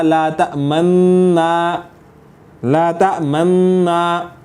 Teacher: تو اصل میں لا تأمنا، اس کی جو اصلی عربی اعتبار سے اگر آپ اس کی ترکیب نکالیں یا اس کا آپ صیغے کو حل کریں گے تو اصل میں لا تأمنونا تھا، لا تأمنونا، تو ہم نے نون کو نون میں ادغام کر دیا